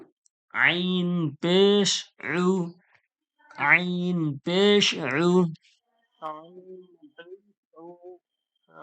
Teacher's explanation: আইন পেশ উইনটা গলার মাঝখান থেকে একটু চেপে আওয়াজ বেরোবে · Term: আইনের আওয়াজটা